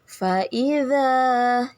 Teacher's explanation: dza Mad Thobi'i dipanjangkan dua harakat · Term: mad tabi'i